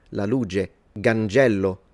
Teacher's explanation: in the south one thing that they tend to do is instead to approximate the ch sound and turn it into a g